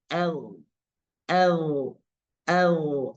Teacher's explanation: Pertama, dia memiliki sifat al-jahar. Jadi ketika diucapkan atau dimatikan, maka dia tidak mengeluarkan desis. Jadi misalnya tidak boleh el, el, el, tapi dia nafasnya agak tertahan.